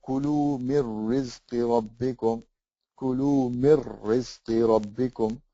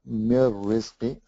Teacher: So you join the noon sakin with the ra without any gunna. Mir rizqi. So it's as if the noon didn't exist.